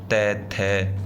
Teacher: मतलब दांत से बोले जाएंगे इनका उच्चारण दांत से होगा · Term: त वर्ग